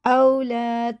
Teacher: الف سے پہلے زبر، یہ کھڑا زبر کی طرح ایک الف کے برابر کھینچ کے پڑھا جاتا ہے